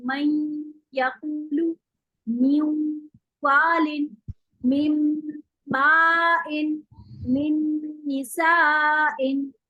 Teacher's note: आप इसमें दो हरकत का गुन्ना लंबा करके पढ़ेंगे